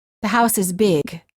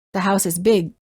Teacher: sometimes the sound is released as in the house is big or it's held as in the house is big